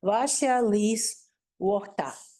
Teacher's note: And another thing that we find in Pita Sami is that the feet are all trochaic. The stress is on the first syllable.